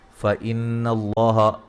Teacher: یہاں نون مشدد پہ غنہ ضروری ہے